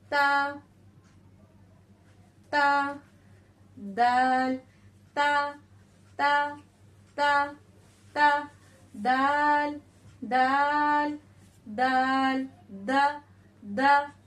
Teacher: अपने जबान की नोक को लगाना है, यानी रासे लिसान को सनाया उलिया की जड़ से लगाना है। तो बारीक आवाज में हमारा ता और दाल दोनों निकलेगा।